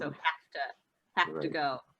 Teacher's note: the v sound and have sounds a bit more like an f